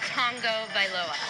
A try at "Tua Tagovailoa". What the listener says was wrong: Oh my goodness. There's no N. There's T-A-G.